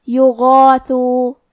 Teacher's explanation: ہم غین کو اور اس کے بعد مد الف کو دونوں کو موٹی آواز میں پڑھیں گے